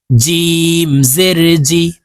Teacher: জিম হরফ জিহ্বার মধ্যখান থেকে উচ্চারণ করতে হবে